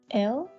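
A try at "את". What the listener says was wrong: Close. Et. Remember, that's the tav. Et.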